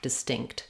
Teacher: our first vowel is going to be again A reduced vowel the e sound de so we don't want any tension there it's going to be very short and my stink is going to be long distinct it was